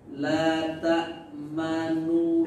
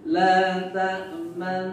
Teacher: Ismam itu dhammus syafatain bila sautin, memunyungkan dua bibir berisyarat menyebut nun pertama berbaris u dengan tidak bersuara